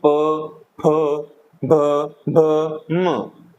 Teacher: तो इस प्रकार है कि हमारे होठ स्पर्श कर रहे हैं